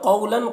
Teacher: قولاً قاف کو پر پڑھنا حروف مستعلیہ میں سے ہے اور واو لین ہے، یہاں پر اسے جلد پڑھنا ہے